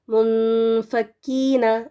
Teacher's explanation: نون کا تھوڑا سا آپ اس کو پروناؤنس کریں گے اور تھوڑا سا چھپائیں گے اگلے جو حرف ہے نا اس میں